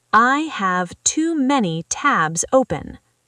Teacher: Tabs ends with a Z sound.